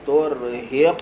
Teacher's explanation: qaf makhraj dia pangkal lidah ke langit-langit atas Qalqalah sentuh lepas sentuh lepas